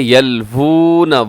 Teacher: واو کی آواز آنی چاہیے، اسے یلون آپ نے نہیں پڑھنا